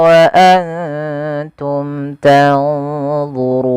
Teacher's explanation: Pada lafal run ada bacaan mad arid disukun, mad yang terjadi ketika akhir bacaan kita sebelumnya ada huruf mad, yaitu disebabkan karena adanya sukun arid, sukun yang timbul karena waqaf. Awalnya tanzuruna menjadi tanzurun, nunnya dimatikan sebelumnya ada huruf mad.